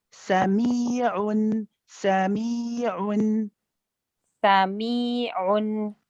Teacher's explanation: We have the mi, which is stretched for 2 counts.